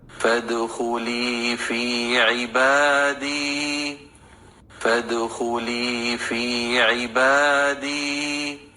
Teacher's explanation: فا کو دال کے ساتھ ملائیں گے اور دال ساکن ہے، دال کو ہلائیں گے یعنی قلقلہ ہوگا دال پہ۔ خو پر پڑھیں گے، حروف مستعلیہ میں سے ہے، پیش کی اس کے اوپر حرکت ہے، 1 کاؤنٹ حرکت ادا ہوگی۔